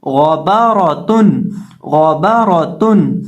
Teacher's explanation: यहाँ हम गौइन को भी मोटा पढ़ेंगे और रौ को भी मोटा पढ़ेंगे